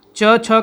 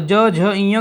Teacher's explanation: और ग घ अंग कहते हैं तो हमारे स्वर तंत्रियों में कंपन होता है। च छ का उच्चारण करेंगे तो कंपन नहीं होगा, और ज झ ञ का करेंगे तो हमारे स्वर तंत्रियों में कंपन होता है।